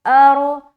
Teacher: ارو موٹا رکھیں گے را کو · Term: را موٹا